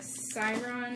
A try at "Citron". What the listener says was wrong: Citron? No, it's a T. It's just a really weird font.